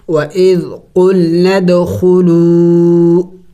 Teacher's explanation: دال حروف قلقلہ میں سے ہے, ساکن ہے تو قلقلہ کریں گے یعنی ہلا کے پڑھیں گے